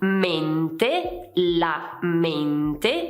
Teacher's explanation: qui c'è l'esempio di mente, la mente, abbiamo una E chiusa